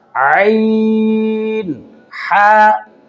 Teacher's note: हल्क ज़बान की जड़ से लेकर सीना की तरफ तक है, तो इसमें जो सीना की तरफ वाला हिस्सा है, यहाँ से ये 2 हरूफ निकलेंगे, हम, ज़ह, हा, और हल्क के दरमियान से निकलेंगे